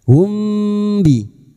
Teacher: mim sukun bertemu ba ikfa safawi samar di bibir kita samarkan bunyi mim sukun humbi dan kita dengungkan selama 3 harakat